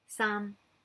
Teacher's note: Sam is like a high falling tone